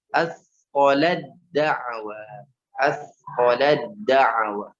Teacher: Ta-nya jangan dibunyikan, masukkan langsung ke huruf dal secara sempurna.